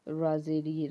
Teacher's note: را کو نرمی سے ادا کریں گے کیونکہ را کے نیچے زیر ہے